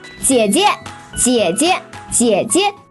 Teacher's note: the second 姐 is pronounced as a neutral tone and sometimes can be omitted in spoken Chinese.